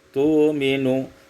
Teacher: Yang keempat, tu'minu ibdalul hamzati wawan, ditukar hamzah waw tu'minu.